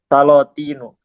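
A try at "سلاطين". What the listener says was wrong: Kok salo? Salah, bukan salo. Salatinu, sultanun, salatinu.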